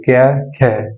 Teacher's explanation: ख्या बोल लेंगे तो थोड़ी ज्यादा हवा निकल रही ना मुंह से, तो इसीलिए ये क्या होगा, ज्यादा वाला महाप्राण।